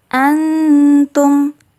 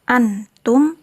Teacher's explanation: Jadi dikenai hukum bacaan ikhfa hakiki. Cara membacanya samar-samar. Antum, tidak boleh jelas antum atau tidak boleh juga terdengar seperti eng.